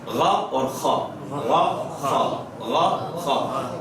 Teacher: حلق ہی اس میں استعمال ہو رہا ہے, لیکن بہت معمولی سا حصہ, اس لیے اس کو ادنا حلق کہتے ہیں